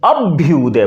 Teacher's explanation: तो जब भ आया है तो भ के पहले अपने आप अल्पप्राण का उच्चारण यानी कि ब का उच्चारण अपने आप हो जाएगा